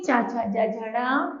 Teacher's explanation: उच्चारण स्थान है तालु और नाम है तालव्य